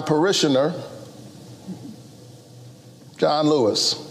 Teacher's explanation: John Lewis was a member of Senator Warnock's church, and his name is so powerful, and his loss is pretty fresh. And so he pauses before his name and then just says it down low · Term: pauses for effect